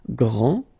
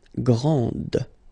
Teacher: Okay, so we've got a little bit the same situation here as we had previously with français and française, because we don't pronounce the final S in français, and it's exactly the same thing. This final D is not pronounced.